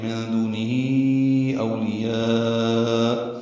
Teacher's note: ہی میں کھڑی زیر مد صلہ ہے، اور اس کے بعد حمزہ آیا جس کی وجہ سے مد صلہ کبرا ہو گئی، 4 حرکات لمبا کریں گے